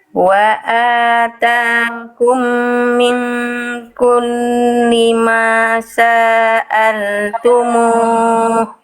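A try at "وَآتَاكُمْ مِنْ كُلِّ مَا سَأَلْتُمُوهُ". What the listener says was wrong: Nah, masih ya, masih sa'al. Sa-nya kepanjangan Bunda, langsung ke a. Sa'a. Masa'a, bukan masa'a, bukan saja kepanjangan ya. Masa'al tumuh.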